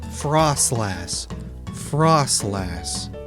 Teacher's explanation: It's like you're not saying frost, it's frost. But you you can still hear that slight ever so slight implied T sound in there